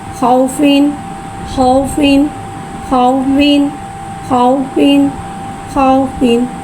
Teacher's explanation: वाव साकिन है, वाव साकिन से पहले ज़बर आ रहा है, वावलीन हो रहा है, लिहाजा वावलीन को बगैर खींचे बगैर झटका दिए नरमी से मारूफ पढ़ेंगे। खौ वाव ज़बर खौ।